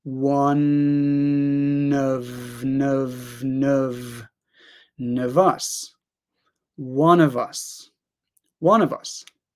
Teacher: and we can connect one to of